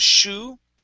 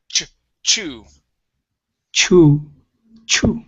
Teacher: feels very similar to the sh but you push on the air and then you stop it so it's it's a it's a push sound and then but